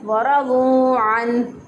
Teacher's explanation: इनमें से किसी भी हरफ को लंबा करेगा तो गलत हो जाएगा। सिर्फ वाओ पेश वाऊ को लंबा इसमें करेंगे क्योंकि ये वाओ मद्दा है। इसके अलावा वाओ और रॉ दोनों को लंबा करना गलत है।